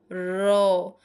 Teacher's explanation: কম্পন সৃষ্টি হচ্ছে মানে কাপছে। তাহলে এটা কি? কম্পিত ব্যঞ্জন ধ্বনি। যে ধ্বনি উচ্চারণের সময় জীব একাধিকবার অতি দ্রুত দন্তমূলকে আঘাত করে বায়ুপথে বাধার সৃষ্টি করে তাকে হচ্ছে কম্পিত ব্যঞ্জন বলে।